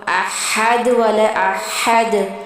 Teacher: ہمیں حلق کے نیچے والے حصے سے اور پھنس کے آواز نکلتی ہے اس کی